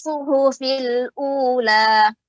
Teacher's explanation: pada kata suhu tadi terdengar agak lebih tebal ya, lebih huruf H, jadi huruf H yang besar ya